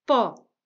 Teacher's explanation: o com acento agudo aberto